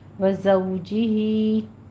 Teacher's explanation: زو میں زے کی سیٹی کے آواز کے ساتھ ادا کرتے ہوئے ہونٹوں کو ناتمام گول کریں گے